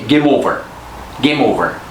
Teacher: to vowels for example m in game an O and over we just say them as one word there is no change to their sound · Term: linking consonant to vowel